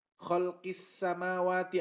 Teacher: Khalqis samawati, alif lamnya nggak dibaca. Disebut alif lam syamsiyah. Kenapa? Alif lam bertemu dengan salah satu huruf syamsiyah, yaitu huruf sin.